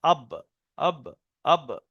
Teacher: আচ্ছা, 16 নম্বর মাখরাজ হলো বার মাখরাজ, দুই ঠোঁটের ভিজে অংশ থেকে উচ্চারণ হয়